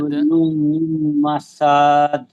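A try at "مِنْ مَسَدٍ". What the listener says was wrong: মাসাদ, সাদ টান হবে না।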